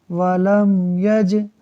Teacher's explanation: یعنی ہم غنہ نہیں کریں گے۔ دوسرا قاعدہ یہ ہے کہ جیم حروف قلقلہ میں سے ہے، ساکن ہے، خوب قلقلہ ہوگا، یعنی آواز لوٹ کر نکلے گی۔ · میم ساکن کے بعد یا حرف با اور میم کے علاوہ ہے، لہٰذا یہاں اظہار شفوی ہوگا، یعنی ہم غنہ نہیں کریں گے۔ دوسرا قاعدہ یہ ہے کہ جیم حروف قلقلہ میں سے ہے،